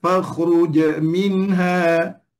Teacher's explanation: huruf jim tu dia nak baca dengan qalqalah mengikut dengan baris selepasnya. Maksudnya boleh baca dengan baris bawah.